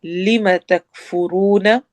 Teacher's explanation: لم کو لمبا نہیں ہونے دینا